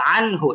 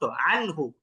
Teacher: আমরা গুন্না ছাড়া এটাকে স্পষ্ট বলব। 19 এর মত কোন উচ্চারণ হবে না।